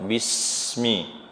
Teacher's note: Dibaca jelas sofir, udaranya kumpulkan antara ujung lidah dengan gigi seri yang bawah.